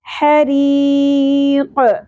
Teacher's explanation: ری یہاں پر باریک ہوگی اور یا مدہ ہے ایک الف کے برابر کھینچنا تھا لیکن یا مدہ کے بعد نیکسٹ جو حرف ہے وہ ساکن ہو گیا وقف کی صورت میں تو یہاں پر مد عارض وقفی ہوگی تین الف کے برابر کھینچنا ہے. حریق قاف ساکن پہ قلقلہ بھی ہوگا اور قاف کو پر ادا کرنا ہے. میرے ساتھ ساتھ دہرائیے.